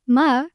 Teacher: the second tone, which rises up like you're asking a question.